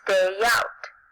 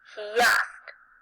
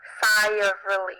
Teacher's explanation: Vowel-vowel linking occurs when one word ends in a vowel sound and the next word begins with a vowel. You add a y sound or a w sound in between the vowel sound at the end of the first word and the vowel at the beginning of the second word